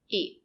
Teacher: the sound is short because it's not stressed